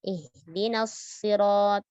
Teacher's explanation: Lalu pada kata as-sirat, huruf lam pada kata as-sirat jangan jangan dibaca dengan jelas tetapi melebur ke dalam huruf shad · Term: lam syamsiyah